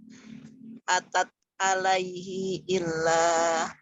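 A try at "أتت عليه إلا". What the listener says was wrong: Huruf ainnya berubah jadi hamzah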